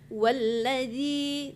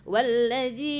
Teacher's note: walladzi sampai panjang itu cuma 2 harakat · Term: mat tabi'i